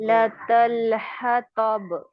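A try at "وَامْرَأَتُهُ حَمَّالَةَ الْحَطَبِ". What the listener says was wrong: तो अभी भी आपकी तल तल ये जो है, ये इसको मोटा नहीं करना, इसको आप मोटा करते हैं, ठीक है। बारीक है, लाम बारीक है, ता बारीक है, ठीक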